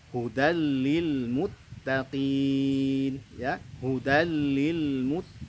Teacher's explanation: Hukum bacanya adalah idgham bila gunnah, diidghamkan tanpa adanya dengung atau gunnah